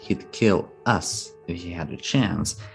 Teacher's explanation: The importance is on us.